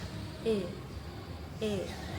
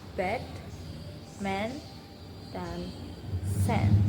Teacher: Buka mulut tengah-tengah. E tidak terlalu lebar dan menyempit. Posisi lidah angkat di bagian depan. Lidah ke posisi pertengahan di dalam mulut. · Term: bunyi e